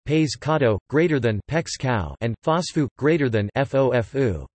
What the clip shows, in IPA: pexˈkao